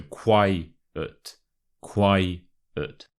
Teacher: with the word quiet you want to put the stress on the first syllable